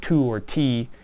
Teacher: we say it with that kind of H that kind of uh breathy uh pause there between the T and the vowel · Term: aspirated t